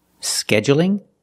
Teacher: you can say scheduling with a stress on the first syllable.